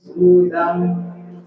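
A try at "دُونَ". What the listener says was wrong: Bukan dudang, dudang. Nah, di sini suaranya di sini. Jadi jangan dudang, jangan ke dalam-dalam. Kalau dudang itu suara ang itu berasal dari dalam. Ini suaranya dari luar. Dudan dari sini.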